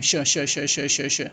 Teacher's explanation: हम श का उच्चारण जो होता है वो तालु से है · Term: तालव्य